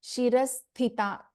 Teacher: first tha in Shirasthita is a Mahaprana, second one is a Alpaprana